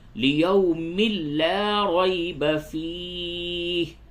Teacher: فَكَيْفَ اذا جمعناہم لیوم لا ریب فیہ. تنوین کے بعد لام ہے، ادغام بلا غنہ ہوگا